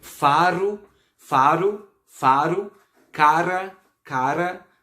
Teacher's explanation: O R, ele tem o som vibrante mesmo, como por exemplo em faro, cara, não tem som de Ra, é Ra, beleza?